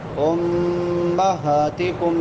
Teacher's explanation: امہاتکم میم مشدد ہے غنہ ہوگا. ہا کھڑی زبر ہے ایک الف کے برابر لمبا ہوگا